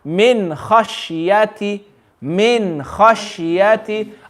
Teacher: After the noon sakin, we have a kha. So kha is the letter of the throat. No gunna.